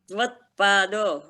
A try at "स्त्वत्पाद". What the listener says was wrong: नहीं स भी है उसमें स्तवत्पाद स का उच्चारण होगा स्तवत्पाद